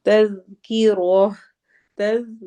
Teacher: ذال کو نرمی سے پڑھنا ہے، تز نہیں کرنا ورنہ وہ را کے بعد والا زا بن جائے گا۔ تذکیرہ، را کو موٹا کرنا ہے اور آگے ہا کے ساتھ ہا کی ساؤنڈ ہوگی۔